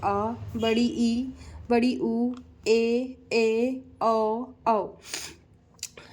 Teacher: दीर्घ स्वर जिसके उच्चारण में सबसे दुगना समय लगता है उसको दीर्घ स्वर कहते हैं।